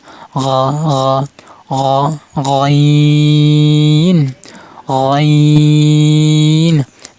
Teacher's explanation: এবার গইন হরফ মাস্য করব। হলকের শেষ অংশ থেকে উচ্চারণ হবে, মানে গলার শেষ অংশ থেকে উচ্চারণ হবে। অ গ গ একটা শব্দ, একটা গ গ যেরকম পানি রাখলে গলাতে এরকম শব্দ হয়, এরকম শব্দ করবেন।